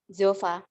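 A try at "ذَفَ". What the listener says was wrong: Dofa. Dofa. Bukan jo. Do. Dofa.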